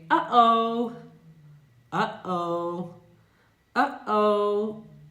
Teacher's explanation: this kind of invisible t sound by closing the airway in the throat very quickly